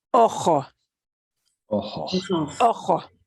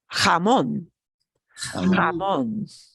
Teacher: If you don't get the throaty part, but you just do a kind of heavy duty H, you'll be understood. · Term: jota